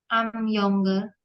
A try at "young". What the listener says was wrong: Terus yang juga bacanya yang, bukan yong, ya. Yang.